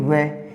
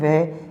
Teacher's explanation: दंत और ओष्ठ से मिलके उच्चारित किए जाते हैं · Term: दंतोष्ठम